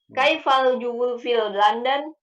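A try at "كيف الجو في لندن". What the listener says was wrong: Kaifal jauh, bukan jubu. Jauh.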